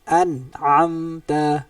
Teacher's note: Jelas, nun tu bunyi jelas tanpa ada dengung. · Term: izhar